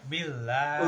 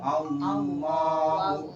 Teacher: sebelum lafaz Allah kas kasrah maka lam di sini dibacanya tipis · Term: tarkik